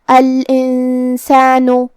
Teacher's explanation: سین حروف الاخفاء میں سے ہے اور اخفاء کا معنی ہے چھپا دینا، تو ہم یہاں نون ساکن کو چھپاتے ہوئے اور غنہ کے ساتھ یہ حکم کو ادا کریں گے